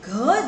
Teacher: એ જ રીતે તમે જ્યારે ગ બોલશો તો એ અલ્પપ્રાણ ધ્વનિ છે, હવાનો જથ્થો બહાર ઓછો ફેંકાય છે. અને ઘ જ્યારે તમે બોલશો ત્યારે તમને સમજાશે કે હવાનો સ્પર્શ વધારે થાય છે, જથ્થો વધારે વપરાય છે. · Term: મહાપ્રાણ ધ્વનિ